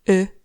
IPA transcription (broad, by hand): ɨ